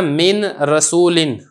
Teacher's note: آپ نے اس کو را ہی پڑھنا ہے، نون بالکل سرے سے پڑھنا ہی نہیں ہے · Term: بغیر غنہ کے ادغام